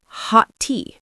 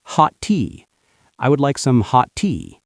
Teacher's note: T and T, just one long T.